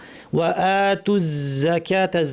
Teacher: যা বলার সময় জিহ্বার শীর্ষ নিচের পাটির দাঁতের গোড়ায় লাগিয়ে বাতাস বন্ধ থাকবে, অনেকে বাতাস ছেড়ে দেন শোনা যায়।